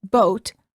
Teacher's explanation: for the o sound as in boat the lips are rounded and tense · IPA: /ou/